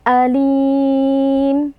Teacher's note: ada tanwin berjumpa dengan Hamzah hukumnya adalah izhar halqi cara membacanya tanwinnya kita baca dengan jelas tanpa berdengung · Mad Arid lukun kerana ada Mad tabi'i bertemu dengan huruf yang sukun saat waqaf iaitu huruf mim cara membacanya kita panjangkan dua empat atau enam harakat